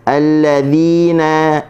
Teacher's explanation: kalimah alladzina, huruf dzal, hujung lidah kita kena letakkan di hujung gigi atas. Keluarkan sedikit. Dan apabila bagi bawah kita kena senyum.